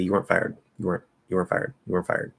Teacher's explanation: it's like were basically plus a stop t um weren't were and i'm also getting a little extra nasal · i'm also getting a little extra nasal on that er which creates the illusion of an n so i'm not actually closing into the end i'm kind of · I'm actually starting to notice little subtle cases where we can actually use a little extra nasalization on a vowel in order to avoid actually creating the N and allow us to speak faster.